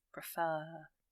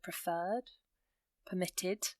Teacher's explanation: it's quite subtle, but you can hear the emphasis on the end of the word